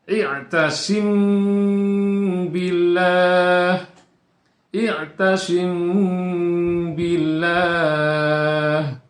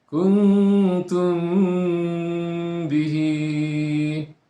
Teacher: mim mati bertemu dengan huruf ba yang hukum bacaannya adalah dibaca dengan samar. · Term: ikhfa syafawi